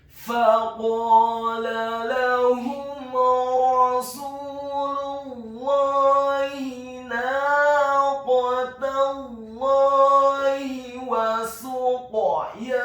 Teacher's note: Faqala lahum, huruf fa-nya dibaca fathah 1 harokat, huruf qaf-nya dibaca tafkhim tebal fathah 2 harokat karena setelahnya ada alif. Kemudian huruf lam-nya dibaca tipis tarqiq fathah 1 harokat.